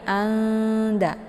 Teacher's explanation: Karena posisi makharijul huruf nun dengan dal itu saling berdekatan ya. Nun posisinya di ujung lidah, kemudian dal juga posisinya di ujung lidah. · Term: ikhfa a'la